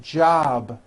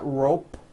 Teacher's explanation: keep the voicing going throughout the whole word job with a voiced be ending same thing with robe also